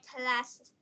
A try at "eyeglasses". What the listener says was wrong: Just glasses. This is g, not k. Glasses. Eyeglasses. So what is your problem with G? Eyeglasses, glass.